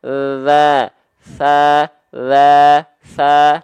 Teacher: Huruf tha, huruf dzal dilafalkan ujung lidah cukup nempel ke ujung gigi sari atas kita tipis-tipis.